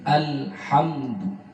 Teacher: Hamdu bertemu dengan huruf dal disebut hukum izhar. Hamdu tidak boleh dengung, tidak boleh dibaca lama. · Hati-hati pada alhamdu, lamnya tidak boleh mantun, yang dikenal dengan tawallud, dilarang. Karena ini bukan huruf qalqalah, dilarang mantun, bukan alhamdu, tapi alhamdu.